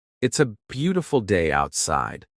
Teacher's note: Watch their lips." Notice how the B in beautiful makes both lips touch. Notice how the T in outside makes the tongue touch the top of the mouth.